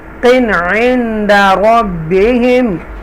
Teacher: صید صید صدق عند ربهم، یہاں پر تنوین ہے قاف تنوین کے ساتھ اور قاف کسرتین کے ساتھ ہے اور اس کے بعد عین ہے حروف حلقیہ میں سے، تو لہٰذا یہاں اظہار کریں گے